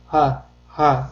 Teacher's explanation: Ha harfi esa juda yumshoq talaffuz qilinadi va bo'g'zimizning eng tubi qismidan, ya'ni o'pkamizga yaqin joyda hosil bo'ladi. Ha deb talaffuz qilinadi.